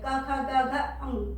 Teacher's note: क वर्ग को बोलते समय जिह्वा कंठ को स्पर्श कर रही है, बस वही टच हो रही है, क ख ग घ अंग, देखिए, और जिह्वा का बिल्कुल भीतरी भाग उसको स्पर्श कर रहा है, और ह को इस तरह से उसका उच्चारण स्थान विसर्ग है।